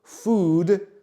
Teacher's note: čiže jedlo food, dlhé o a d food